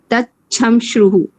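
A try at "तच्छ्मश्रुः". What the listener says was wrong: Tachamashruhu. Tachmashruhu. Chanai, sorry. Tachmashruhu. Chanai. Cha full nai. This is also a halant. Tachmashruhu.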